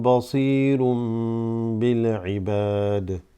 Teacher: Ibad, extending the ba slightly with the alif · Basirun would have been un, but because there's a ba that follows a dammatain, this becomes a small inserted meme. That should be an M, not an N.